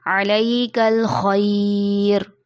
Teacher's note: खौ मोटे हुर्फ़ों में से भी है, उसको मोटा करके पढ़ते हैं, जैसे अलैकल खैर।